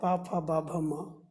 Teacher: पा वर्ग पा फा बा भ म को हम लोग कहते हैं, इनका उच्चारण स्थान ओष्ठ है, ओठ है। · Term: ओष्ठ वर्ण